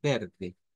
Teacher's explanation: Y hay uno, que es este, ¿verdad? El acento riverense, que es como en español prácticamente. Se dice nada más que con una R suave